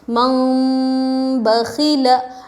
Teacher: جیسے میم زبر مم، با زبر با مم با، خا زیر خی مم بخی، لام زبر لا مم بخیلا۔ دیکھیے غنہ بھی ہونا چاہیے اور اخفاء بھی ہونا چاہیے، ہلکا سا اخفاء اور غنہ · نون ساکن کے بعد با آیا تو نون کو میم سے بدل کر غنہ اور اخفاء کے ساتھ پڑھیں گے، اس کو اقلاب کہتے ہیں۔